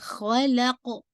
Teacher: لام کو باریک اور خوف کو ہیوی بھی، اور ساتھ میں قلقلہ باؤنس